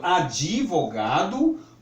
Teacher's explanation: Daí também essa necessidade que algumas pessoas sentem ao pronunciar uma palavra como advogado, que o D é muito suave, advogado. Mas as pessoas sentem a falta da vogal e aí acabam pronunciando advogado